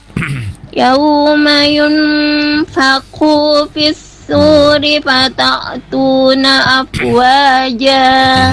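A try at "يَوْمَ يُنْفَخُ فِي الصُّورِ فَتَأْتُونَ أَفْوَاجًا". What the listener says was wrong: Hati-hati panjang pendeknya. Yauma yunfakhu fi, khunya tidak panjang tapi pendek. Yauma yunfakhu fis su, fis itu alir dulu baru su ya. Fis suri fata'tuna itu hamzah sukun, tidak fata'tuna itu masuk ke ain sukun ya, berubah hurufnya. Hati-hati kalau berubah huruf merubah maknanya nih, jauh sekali.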